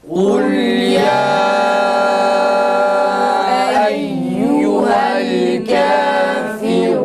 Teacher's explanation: Ra kalın. Kafirun şeklinde değil. Türkçedeki kafir diyoruz değil.